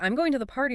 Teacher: But if you say, "I'm going to the party," with your voice falling at the end, it sounds like a statement. So even without changing the words, the meaning changes just from the tune.